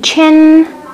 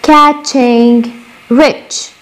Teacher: التو افريكيتس التش والج وين بنعملوا في منطقة البلاتو الفيولر